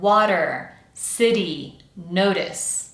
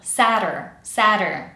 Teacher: We have a really quick little tap of the tongue against the pallet to represent the T sound. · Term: tapped T